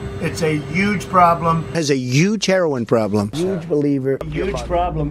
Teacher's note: I noticed that he doesn't pronounce the H for huge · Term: a New York thing